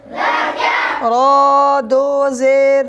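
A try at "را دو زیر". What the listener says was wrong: रवा को खींचना नहीं है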